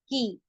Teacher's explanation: इसको हम हलक से नहीं निकालेंगे, सिर्फ की ऐसे बोलेंगे, की इस तरीके से नहीं इसका प्रोनाउंसिएशन आएगा, सिर्फ की आएगा। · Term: कबूतर वाला की